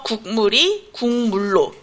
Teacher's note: 기역이 미음 앞에서 이응으로 바뀌는 이런 게 비음화의 예시에 해당합니다